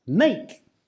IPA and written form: meɪk (make)